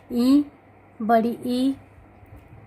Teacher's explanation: ई में अगले भाग का प्रयोग होता है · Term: अग्र स्वर